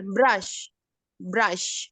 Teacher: karena si brnya nih dia Voice tapi huruf tiga terakhirnya itu voiceless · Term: campur voice and voiceless